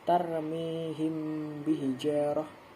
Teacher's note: Cara membacanya adalah dengan membaca mim mati dan huruf tersebut disamarkan. Tidak ada penekanan dalam yang kuat pada bibir tersebut dan membacanya disertai dengung. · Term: ikhfa syafawi